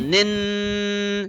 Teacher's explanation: in the case of noon, we will press the tip of the tongue at the roof for 2 seconds. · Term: gunna of noon